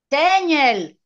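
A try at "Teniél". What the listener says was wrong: C'è una E con l'accento.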